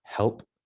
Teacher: Now the letter H gets a little tricky because in classical Latin, the H was pronounced, just like how we say the word help in English, the H is just a slight aspirated sound